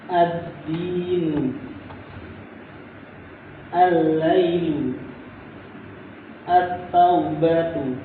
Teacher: Huruf lam pada al itu idgham ke huruf setelahnya.